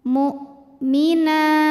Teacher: Hamzah dari segi suara sifatnya syiddah, suaranya kuat. Saat kita tekan tertahan.